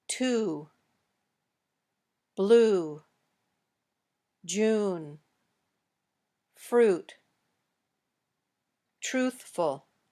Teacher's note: Your lips should be very rounded when you say this sound. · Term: oo